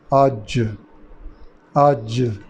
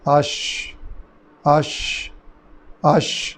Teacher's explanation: یعنی آواز پورے منہ میں پھیل رہی ہے، قلقلہ نہیں ہو رہا. جیم میں قلقلہ ہو رہا ہے.